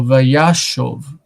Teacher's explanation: we see the stress accent on the first kamatz, that is on the ya, vaya, and that means that the second kamatz is unstressed and the syllable is closed.